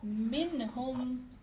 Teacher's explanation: منہم میں اظہار ہوگا کیونکہ ہاں حروف حلقی میں سے ہے